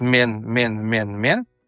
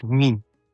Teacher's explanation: во всех тюрских языках все говорят мен, мен, мен. И только татарские, башкирские говорят минь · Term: смещение гласных, поволжское смещение гласных